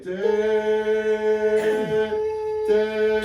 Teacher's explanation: it's a little bit on the A side of eh